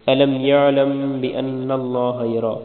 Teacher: اللہ کی لام کو موٹا پڑھیں گے، یرا را کو موٹا پڑھیں گے